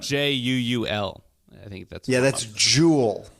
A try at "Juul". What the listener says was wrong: You got to put more emphasis on the second U.